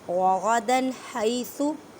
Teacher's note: ہا کو حلق کے درمیان والے حصے سے ادا کریں